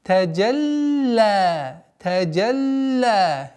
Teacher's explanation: После фатхи джима «таджа» уходим на удвоение ляма.